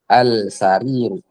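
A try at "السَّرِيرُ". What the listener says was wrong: As-sariru. Al atau as?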